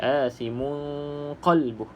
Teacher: dengungnya dengan cara ikhfa lah, kita sembunyikan ataupun samarkan bunyi nun tersebut.